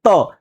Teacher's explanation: यानी जब हमारी जीहवा ऊपर वाले दांत को जाके टच करती है तब जाकर के हम त बोल पाते हैं